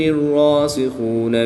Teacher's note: را مشدد پر کھڑی زبر ہے اس لیے را کو پوری یعنی موٹا پڑھیں گے۔ خا حروف مستعلیہ میں سے ہے تو اس کو بھی پوری یعنی موٹا پڑھیں گے۔